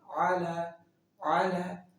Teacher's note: اب علی عین کی جو ساؤنڈ ہے، حلق کے درمیان والی حصے سے نکالیں گے